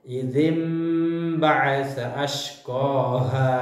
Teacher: nun mati atau atau tanwin bertemu dengan huruf ba jadi baca nun mati atau tanwin tidak lagi dibaca Nun atau tanwin berubah menjadi Bunyi huruf mim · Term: iklab